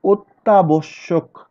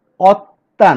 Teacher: সংবৃত উচ্চারণ হয়েছে, ও এর মতো উচ্চারিত হয়েছে